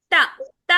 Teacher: అనంగానే మన నాలిక దంతాలకు తగులుతుంది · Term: దంత్యః